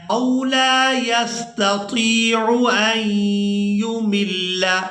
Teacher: حمزہ کو یا مشدد کے ساتھ ملائیں گے اور غنہ کے ساتھ ادا کریں گے